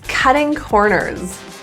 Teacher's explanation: The T's in cutting are pronounced as flap T's. Those sound like a little bit of a D